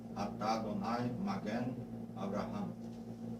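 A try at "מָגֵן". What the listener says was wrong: Eu peguei outra coisa. Magen. É Magen, não é? E, não é. Magen. Magen, não Magen. Magen. Magen. Magen. É, faz com um chapeuzinho, não é isso? chapeuzinho no E, Magen.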